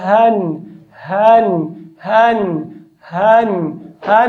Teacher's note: دغه دوه حروف مخرج اقصا د حلق ده لږ باید داسې واضح او سختۍ سره ادا کړو